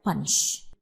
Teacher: We accent it or we stress on the first syllable